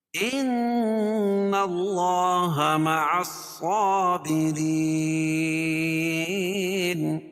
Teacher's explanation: ان نون مشدد ہے، اس میں غنہ ہوگا، اور اللہ کے لام سے پہلے نون کے اوپر زبر ہے تو اللہ کا لام پر پڑا جائے گا۔